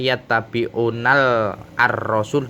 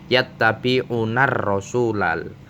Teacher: Hukum ro itu berada dalam idgham syamsiyah, maka alnya tidak boleh dibaca jelas, tidak boleh, contoh tidak boleh yattabi'unal ar-rasul, tidak boleh, tapi langsung idgham dimasukkan ke huruf ro, yattabi'unar rasulal.